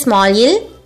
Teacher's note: While pronouncing it, your tip of the tongue touches the starting roof of your mouth right above your teeth.